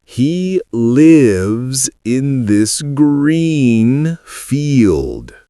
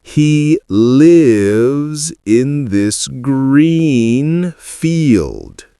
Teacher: Feel the difference? Lives is short and relaxed. Green and field are long and smiling. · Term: Vowel differences